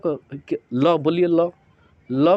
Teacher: तालू में चिपक जाएगा लेकिन उसके बगल से हवा निकलती है ल में क्या होता है जीभ के बगल से हवा निकलती है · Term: पार्श्विक